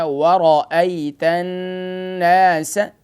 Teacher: اب یہ آیت نمبر 2 پر غور کیجئے کہ یہاں پر واو کے بعد جو ابتدا ہو رہی ہے، واو کے بعد را ہے. را کو فل ماؤتھ یعنی کہ موٹا کر کے پڑھنا ہے